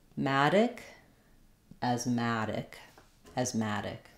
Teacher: reduced which will change how the vowel sounds a little bit the important thing to practice there is stressing on the ma syllable